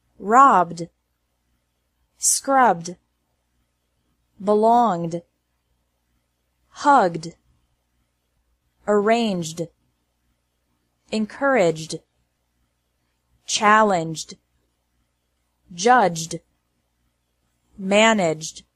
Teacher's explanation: ED is pronounced like D after verbs ending in a B, G, or J sound.